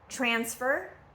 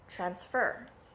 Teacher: transfer again transfer is the noun transfer is the verb so nouns you're going to always stress the first syllable present and verbs you're going to stress the second syllable present